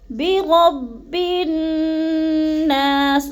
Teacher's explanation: نا کو تھوڑا سا لمبا کر جانا ہے کیونکہ ادھر الف مدہ ہے